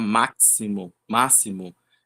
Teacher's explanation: máximo a gente fala com um som de s, não de x